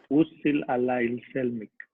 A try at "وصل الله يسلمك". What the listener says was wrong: Perfect. Perfect. كتير منيح. برافو عليكم.